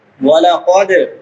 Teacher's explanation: دال حروف قلقلہ میں سے ہلا کے پڑھیں گے